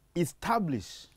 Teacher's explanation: The word reads establish. So you put a stress on the second syllable.